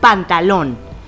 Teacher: en esta palabra la sílaba tónica se encuentra en lon y recordando las reglas sabemos que es aguda porque está en